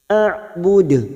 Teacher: huruf Ain sukun memiliki sifat tawasud Jangan samakan dengan Hamzah AUD ujungnya Kita pantulkan kuat karena ada huruf Dal yang mati di akhir kalimat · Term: qalqalah kubra